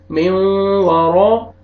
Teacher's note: रा को मोटा करके पढ़ेंगे